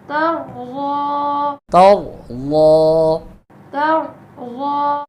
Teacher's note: را بھی موٹی ہے, پر کریں گے را کو, اور ضاد یہ بھی پر حرف ہے